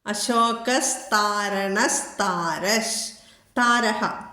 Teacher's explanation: വിസർഗം ലോപിച്ചിട്ട് അവിടെ സെ എന്നുള്ളത് വരും